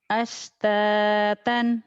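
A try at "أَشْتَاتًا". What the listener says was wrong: Kurang anginnya. Ashtatan. Shin. Syuh. Shin. Ashtatan. Alam nashrah laka. Sodnya. Kayak sin aja. Kayak as. As. Sod. As. Sin biasa tapi ada ho-nya. Ada SH.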